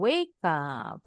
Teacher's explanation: Karena E udah pasti silent kalau di akhir kata. Jadi konsonan K nyambung bunyinya disambungin ke bunyi huruf vokal.